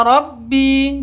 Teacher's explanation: bi panjang dua ketukan karena ada ya mati diawali dengan kasrah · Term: mad thobi'i